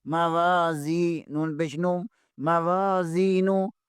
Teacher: زا زیر کے آگے بھی یا مدہ ہے، اسے بھی ایک الف کے برابر کھینچیں گے